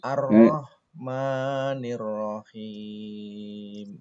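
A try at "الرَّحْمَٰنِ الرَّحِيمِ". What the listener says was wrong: Nah, sepertinya Ar-Rahmannya yang perlu diperbaiki. Rahimnya sudah bagus. Jadi sama-sama hak, jangan sampai. Jadi bersih ya. Ar-Rahmanir-Rahim. Jangan Ar-Rahmanir-Rahim lagi, beda jadinya.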